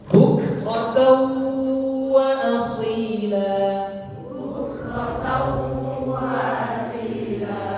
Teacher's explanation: Tanwin bertemu wawu didengungkan